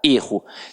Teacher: que o verbo tem a pronúncia aberta é ruim e que o substantivo tem a pronúncia fechada